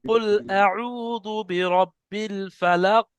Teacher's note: কফের উপরে গিয়ে ধাক্কা দিতে হবে, সেটা কলকলা হবে